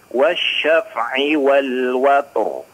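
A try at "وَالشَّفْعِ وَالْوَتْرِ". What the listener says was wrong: wasyaf'i, afan diulang. Afan, si fa-nya jangan terlalu mantul ya. Jangan dipantulkan, Kang.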